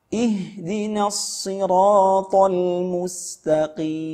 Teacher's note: Karena makhraj huruf al-mim itu dua bibir. Ya, pertemuan dua bibir.